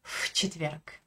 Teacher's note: je prononce un F, un souffle devant le mot четверг